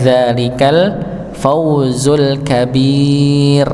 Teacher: yang pada kata alkabir rnya dibaca tipis